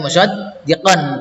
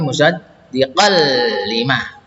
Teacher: Musaddiqal ini yang merah, tidak dibaca musaddiqan tapi musaddiqal lima ya. Ini idgham bila guna, masuk dengan tidak dengung.